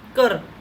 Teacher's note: ਚੜ੍ਹਦੀ ਸੁਰ ਹੈ, ਜਿਹੜੀ ਆਵਾਜ਼ ਆ ਉੱਪਰ ਨੂੰ ਉੱਠ ਰਹੀ ਹੈ